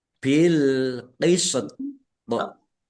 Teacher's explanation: Kemudian ini ada sin sukun dan toknya karena wakof juga dibaca sukun, maka dibaca antara sin dan toknya dikolkolahkan, dipantulkan.